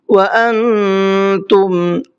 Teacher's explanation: نون میں اخفا ہوگا اس لیے کہ نون ساکن کے بعد میں تا آ رہا ہے جو حروف اخفا میں سے ایک حرف ہے